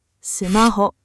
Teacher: Japanese counts rhythm in beats called mora, and sumaho lands on 3. Clipped loanwords keep landing on 3 or 4 mora because Japanese rhythm pulls them there.